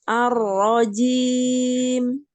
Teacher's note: kurangi sedikit getaran pada ro